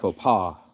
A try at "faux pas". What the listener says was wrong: But you don't say the S. The S is silent.